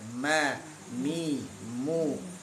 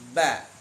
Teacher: Kalau mim nempel aja. Nempel. Kalau ba ditekan.